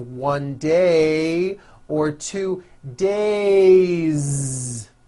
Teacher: it's not days on voice it's days with a voiced Z ending